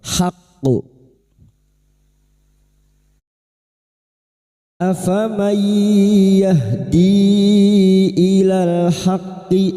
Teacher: bertemunya mad dengan hamzah di lain kalimat mad jaiz munfasil empat atau lima harakat kita panjangkan · kita pantulkan dengan kuat qalqalah kubra